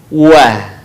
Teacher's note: Selanjutnya adalah huruf wa atau wawu. Diucapkan dengan indhimamus syafatain atau mengumpulkan dua bibir kita.